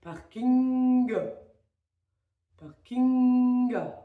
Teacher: Vous tenez le ng et vous l'ouvrez sur un a. Vous allez sentir que, justement, le voile du palais se soulève lorsqu'on est sur le a. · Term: son ng